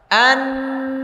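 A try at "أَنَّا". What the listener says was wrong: অনেক দাঁত ফাঁকা হয় নাই। আবার দাঁত ফাঁকা করে বলেন।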